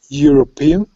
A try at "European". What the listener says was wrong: No, not a G. Like a Y. Euro. Euro. Just like the word yellow. Yellow. Euro. Okay, so it would be wrong to say Juro. It would be wrong to say Jello. But it would be right to say Euro. Yellow.